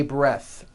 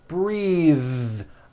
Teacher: Take a breath, unvoiced. But when you change it into a verb, the vowel changes and it becomes breathe. I am breathing with a voiced TH.